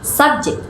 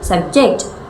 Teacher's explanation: subject with stress on the first syllable is a noun, and subject with stress on the second syllable is a verb